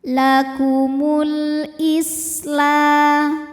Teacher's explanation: sin-nya desis ya karena punya sifat khusus yang namanya shofir ya artinya ada desisan seperti suara ular